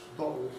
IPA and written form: ˡbɒʔo (bottle)